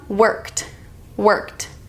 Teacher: This is the T sound because the root word ends in K. Worked. When the root word ends in K, the sound is going to be a T instead of ED.